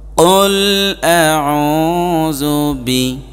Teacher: বড় কাফ মানে গলার মাঝখান থেকে উচ্চারণ হবে